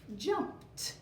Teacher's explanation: the reason that the Ed is saying T is because of the last sound in our base word jump